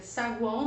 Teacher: No caso de saguão, nós temos um tritongo nasal, som nasal aqui do A